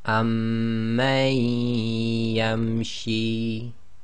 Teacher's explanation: So this will become amman yamshi. So effectively you drop the noon sakin sound and join the ma to the ya, as if ya's got a shadda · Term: assimilation